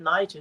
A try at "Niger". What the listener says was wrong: the French is slightly different. Niger, soft G.